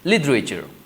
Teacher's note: So the first T we sound as D sound, so it becomes right, literature.